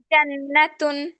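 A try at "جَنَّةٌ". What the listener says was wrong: এটা হয় নাই আবার, এটা হয় নাই, এটা আবার বড়।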